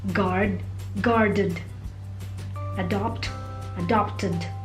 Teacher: The D and ED are also pronounced D if the verb ends with a vowel sound such as pray, prayed, stow, stowed, pursue, pursued, free, freed. The ED is pronounced as an extra syllable id if the verb ends with the sound d or t.